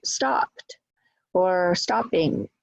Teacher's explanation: the stress will be on the first syllable, on the word, on the content word, not on the suffix.